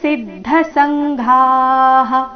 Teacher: ಮುಂದೆ ಸಂಘಾ ನಲ್ಲಿ ಕೊನೆಗೆ ಘಾ ಮಹಾಪ್ರಾಣ ದೀರ್ಘ